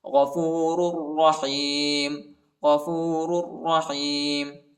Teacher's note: دوسرے را پر شد آیا ہے، دوسرے را کو شدت کے ساتھ، سختی کے ساتھ پڑھیں گے اور مٹبی پڑھیں گے۔